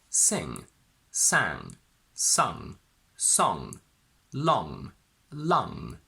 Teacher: What it takes from n is the nasality, so this is a nasal sound and you need to send vibration and air into your nose. So, while the back of your tongue hits the velum and comes back, you need to push the sound into the nose. In some videos, you will see teachers holding the tongue up, but I think it's actually better to bring it back down. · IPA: /ŋ/